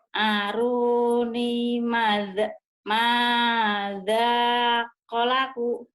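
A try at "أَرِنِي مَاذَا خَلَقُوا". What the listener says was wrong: Aruni mada. Kolaku. Bukan kolaku. Kholaku. Ketuker bang. Kho-nya ketuker. Kok tuker kho. Kholaku. Aruni madza khalaku.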